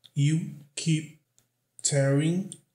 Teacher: Aqui o P não é pronunciado, só tem aquela paradinha brusca, né? O corte do fluxo de ar.